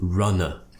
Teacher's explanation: This word is very important, runner, because we're finishing with a schwa sound, Lots of my students pronounce it as runner with an like more of an American style, or they might do runna, where they pronounce it with more of an sound.